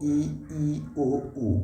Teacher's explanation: संवृत्त स्वर है जिनके उच्चारण में मुँह कम खुलता है। मुँह मतलब ज़्यादातर क्लोज रहता है, ये देखिएगा आप, ये जो इंग्लिश में लिखा हुआ है यहाँ ध्यान से देखिएगा, मुंह ज़्यादातर क्लोज रहता है, ठीक है।